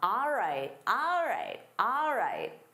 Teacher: instead of saying all right, native speakers commonly say ah.